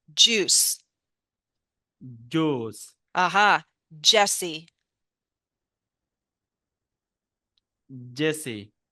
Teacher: all we're doing is, again, we're stopping, releasing into friction with our voice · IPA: dʒ